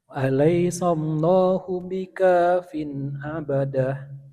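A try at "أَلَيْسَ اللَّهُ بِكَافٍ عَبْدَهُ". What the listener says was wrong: Ya, bukan abadah tapi abdah.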